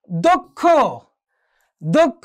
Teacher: প্রথমে হচ্ছে ক, পরে হচ্ছে কি খ, অর্থাৎ প্রথমে অল্প প্রাণ, পরে হচ্ছে কি মহাপ্রাণ